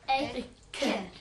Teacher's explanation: E kapim shpejt, qëndrojmë natyrshëm, duke mos bërë shkëputje.